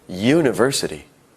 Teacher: University starts with a U, a vowel. However, it sounds like it starts with a Y